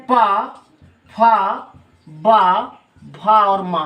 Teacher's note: तो इसका उच्चारण स्थान ऊपरी होंठ है। निचला होंठ ऊपरी होंठ में स्पर्श करता है